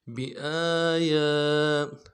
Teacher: الف دال میں کھینچیں گے، یا کے اوپر بھی کھڑا زبر ہے، اس کو بھی ایک الف دال میں کھینچیں گے